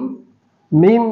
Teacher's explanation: মিম দুই ঠোঁটের শুকনো জায়গাতে উচ্চারণ হয়